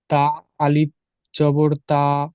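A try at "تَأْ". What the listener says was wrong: তা আলিফ জবর নেই, এই আলিফের উপরে ছোট্ট একটা হামজা দেখতে পাচ্ছেন, এইরকমই এটাকে হামজা বলা হয়। এর উপরে এরকম সাকিন আছে। চলেন পড়েন তা হামজা জবর তা।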